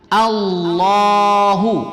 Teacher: hamzah berbaris fathah A, hamzah fathah A, bukan O. Jadi dibaca A.